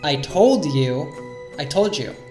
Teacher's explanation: When we have a word ending in D followed by a word beginning with Y, like you, they will often connect and the D plus Y morphs to a J sound. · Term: sound morphing